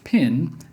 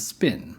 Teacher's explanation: you feel a strong puff of air when you say pin, but not so much when you say spin